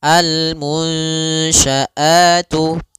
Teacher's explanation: Di situ ada nun sukun bertemu dengan huruf syin yaitu suara nunnya harus dibaca samar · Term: ikhfa